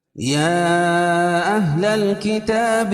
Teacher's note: حروف مدہ کے بعد حمزہ، اہل کا حمزہ دوسرے کلمے میں ہے تو یہ مد منفصل ہوگا، اس میں قصر اور توسط ہے۔